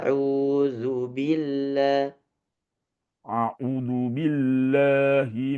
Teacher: dzunya tidak boleh panjang auzubillah auzubillahi min u-nya panjang rya panjang Auzubillahi Auzubillahiminasyaitanirrajim.